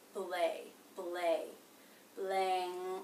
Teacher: when the A vowel is followed by the nasal consonant NG, it's not really the A vowel. It's much more like the A as in say diphthong.